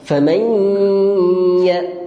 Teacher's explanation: kena dengung dengan sengau untuk idgham ma'al ghunnah ni